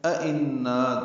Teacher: نا الف مدہ ہے، دو حرکات لمبا ہے